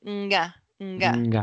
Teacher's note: we can identify that the tongue is back in the mouth, mm-hmm. and the mouth is a little dark, as she showed here.